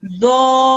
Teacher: this dha gets extended for about 4 seconds minimum, then gets joined onto the ra mushaddad